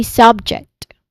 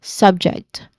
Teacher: stress falls on the first syllable, making it slightly longer and louder.